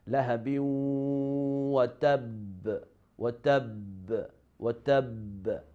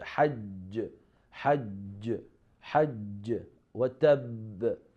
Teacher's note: The Qalqalah Akbar, the strongest strength when the letter is in the end of an ayah or at the end of ayah with shadda. In this level, the echo is strong.